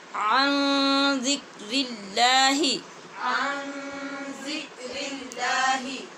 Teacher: یہاں نون پر اخفا ہو رہا ہے، آگے زال حروف اخفا میں سے ہے